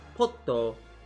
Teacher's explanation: So the pot is the emphasized part, and the O at the end is just there because it needs to be. They need some sound. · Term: double T sound